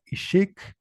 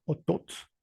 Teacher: el acento o el tono siempre recae en la segunda sílaba de las palabras